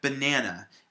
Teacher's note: we put the stress on the middle syllable